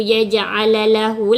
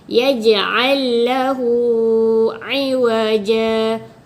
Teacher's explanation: Maksudnya kita masukkan huruf lam tu, ibaratnya satu huruf, maksudnya satu bunyi sahajalah. Kita tak perlu yaj'alalahu lah. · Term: idgham mutajanisain